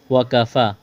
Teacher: واو اور کاف کو جلدی پڑھنا ہے، کاف کو باریک کرنا ہے